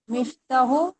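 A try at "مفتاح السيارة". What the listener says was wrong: इसको अलिफ भी पढ़े ना, मिफ्ताह, मिफ्ताहुस सय्यारत। अलिफ भी है ना, अलिफ को आप एक मिफ्ता पढ़ती हैं, बस मिफ्ता नहीं पढ़ती, अलिफ नहीं पढ़ती आगे। मिफ्ताहुस सय्यारत।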